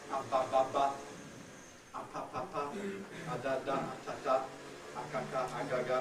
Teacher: the plosives involve a complete obstruction to the flow of air. The air is entirely blocked for a moment.